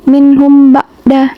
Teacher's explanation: Nah, ba'da ini tajwidnya ikhfa syafawi, mem sukun bertemu dengan ba. Mem sukun bertemu dengan ba, bacanya itu ditahan atau dengan didengungkan.